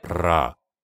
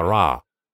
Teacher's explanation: языка ра непохоже на раа в английской буквы почти нет вибрации но для произнесения арабская ра необходимо иметь небольшую вибрацию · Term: вибрации языка